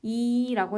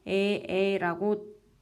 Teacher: 이라고 했을 때는 혀가 입천장에 가까이 있다가 에라고 발음하면서 혀가 점점 아래로 내려오는 것을 느낄 수 있을 것입니다